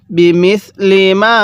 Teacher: মিমের মধ্যে তিন আলিফ টানতে হবে